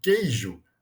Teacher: o u não é pronunciado ele faz parte do dígrafo q u